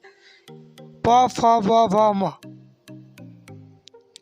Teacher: प फ ब भ म का उच्चारण स्थान ओठ से होता है